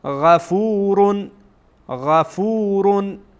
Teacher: غین از کجا ادا می شد؟ از ابتدای حلق، از ابتدای حلق، از اول حلق.